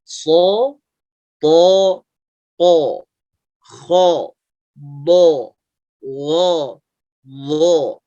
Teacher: Begitu suaranya ya, tanpa memonyongkan bibirnya. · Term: huruf isti'la